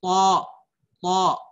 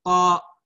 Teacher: Kuncinya bentuk lidahnya. Nah, to, tebal dia. Karena dia sifatnya yaitu isti'ala